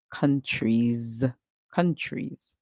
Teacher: the S at the end make a sound like Z